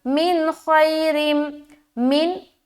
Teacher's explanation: नून साकिन, उसके बाद ख्वा आ गया तो यहाँ पर इजहार का कायदा बना, लिहाजा नून की आवाज़ को जाहिर करेंगे। यहाँ पर रुकना नहीं है, देर भी नहीं लगाना।